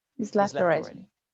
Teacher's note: the word he is shortened or removed. So the sentence starts with a very short I vowel linking to a z sound.